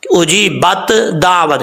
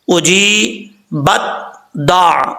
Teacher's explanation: اگر آپ ایسے پڑھیں گے اجی بت دعوت، یہ بھی غلط ہے. تا کو بالکل بھی ظاہر نہیں کرنا، تا کی کچھ صفات جو ہیں وہ ظاہر کرنی ہے